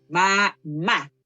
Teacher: la mayor fuerza la ejercemos en la última sílaba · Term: sílaba tónica